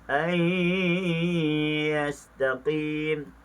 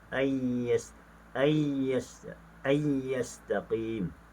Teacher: Manakala bacaan riwayat Khalaf dibaca dengan idgham bila ghunna, ayyastaqim, dimasukkan tanpa didengungkan.